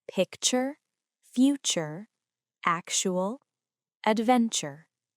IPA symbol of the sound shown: tʃ